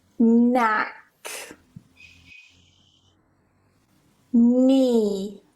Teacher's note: So just don't pronounce the K, go straight to the N and pronounce it as na, na, and that's it.